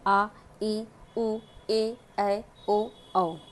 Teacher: जहाँ अधिक समय या दुगुना समय लगता है ह्रस्व स्वर की अपेक्षा उसे हम कहते हैं दीर्घ स्वर कहते हैं।